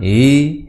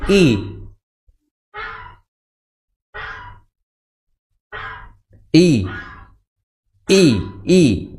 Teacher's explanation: Innaha ya i hamzah di pangkal tenggorokan.